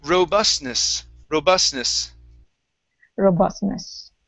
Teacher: an n okay so it's like a t and an n you don't really have to say that t sound okay it's it's hidden inside the n